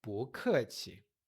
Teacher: 不, subindo, 客 气, desce e neutro. 不 客 气. E desculpe, que também pode ser com licença.